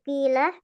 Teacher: Makanya huruf qof itu nanti masuk ke pengecualian tafkhim nisbih. Apabila dia berharakat kasrah maka dia berkurang kadar ketebalannya, kadar istilahnya.